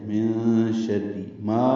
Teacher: من شر ما الف مدہ ہے، دو حرکات لمبا ہے